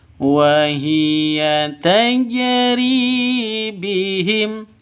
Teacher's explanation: Ri panjang 2 ketukan karena ada ya mati diawali dengan kasroh. Ya mati sebelumnya kasroh. · Karena ada di tengah berarti qalqalah sugro ya. Tajri harus dipantulkan ke huruf jimnya, huruf qalqalahnya.